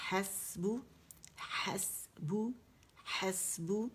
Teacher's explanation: حس ہمس واضح ہوگا، ح جبڑا کھولیں گے